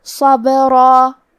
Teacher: صاد کا حکم ہے تفخیم تو ہمیں صاد کو بھاری آواز میں پڑھنا ہے · حرف البا پہ جزم ہے کیونکہ با بھی حروف القلقلہ میں سے ہے تو ہم یہ حرف کو ہلاتے ہوئے یہ کلمہ کو پڑھیں گے